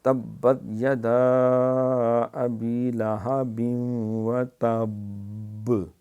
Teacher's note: یہ با کے اوپر قلقلہ ہوتا ہے، شد بھی ہے، اس لیے دیر لگا کے یہاں شد کر کے قلقلہ کریں گے